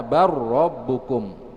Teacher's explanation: Contohnya qala bal rabbukum menjadi qala bar rabbukum, rabbus samawati wal ard. Jadi lamnya tetap masuk ke huruf ra.